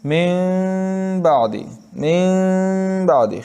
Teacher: من بعد خیشوم میں آواز آ گئی، تو ایسے نہیں پڑھتے من بعد نہیں پڑھتے، من بعد زبان اپنے مخرج سے ہٹ کے آواز کو خیشوم میں لے کر گئے کہ نہ ادغام ہو اور نہ اظہار، بلکہ دونوں کے درمیانی حالت ہو، یعنی نہ تو اظہار کی طرح اس کی ادا میں زبان کا سرا تالو سے لگے اور نہ ادغام کی طرح بعد والے حرف کے مخرج سے نکلے۔